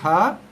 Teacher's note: Kawasan makhraj yang paling hujung. Okey, yang paling last sekali. Di hujung pangkal leher kita ni.